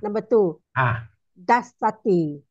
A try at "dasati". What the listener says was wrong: There's no double S there. Dasati.